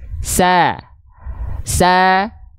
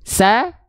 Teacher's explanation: huruf Sin ketika fathah karena dia tipis maka dia dibaca dengan vokal a ya huruf Shad ketika fathah karena dia huruf yang tebal dia dibaca dengan vokal O